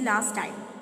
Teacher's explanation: Last time, t is dropped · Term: alison